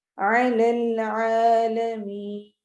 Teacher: عین حروف حلقی میں سے ہے، حلق سے ادا ہوگا. اور العالمین میں آخر میں یا مدہ ہوگی.